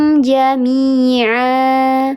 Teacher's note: Ya sukun sebelumnya harakatnya kasrah, dibacanya panjang dua harakat, namanya mad tabi'i.